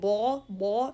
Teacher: Ba, so it is characterized by openness, so the sound should be pushed out. And the tongue is lowered. No need to elevate the back of the tongue to say ba, ba.